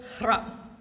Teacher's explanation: So that first part, the H-R-A-F, is this rough, rolled hra. Like you've stopped a sprinter and you've asked them to say crap while they're clearing their throat.